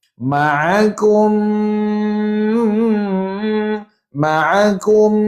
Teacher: mim pula ada sabdu maka wajib dengung dua harakat